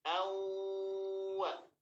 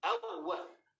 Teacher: maka bukan menjadi idgham kamil tapi menjadi idgham naqis dikarenakan sifat huruf nunnya itu masih tersisa